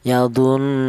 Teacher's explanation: Ghunah itu artinya ada suara bertas, ada suara berdengung. Itu artinya gunah. Panjangnya dengung yaitu dua ketukan. Yadun seperti itu.